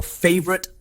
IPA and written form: ˈfaɪvərɪt (favorite)